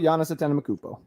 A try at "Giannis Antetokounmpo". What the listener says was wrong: You just added an M in there.